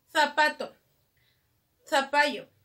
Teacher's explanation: interdental la lengua sale por los dientes